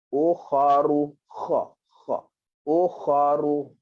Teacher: Kha, sambil kita sebut kha, kita ingat kha keluar dekat kerongkong. Okey, keluar kat kerongkong dan keadaannya seperti kita nak buang sesuatu daripada tekak